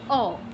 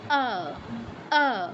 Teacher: আমি বাংলা উচ্চারণ করছি অ, ঠোঁটটা গোল হয়ে যাচ্ছে · সংস্কৃতে আ, বাংলায় অ। ঠোঁট গোল করা যাবে না, দুই পাশে প্রসারিত হতে হবে ঠোঁট দুটো।